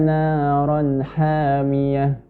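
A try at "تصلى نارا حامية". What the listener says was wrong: Ta kita bahas tadi, ta tipis ya. Jangan sampai menjadi tebal karena shad yang tebal. Jadi tetap ta, bukan to. Tasla naran hamiyah.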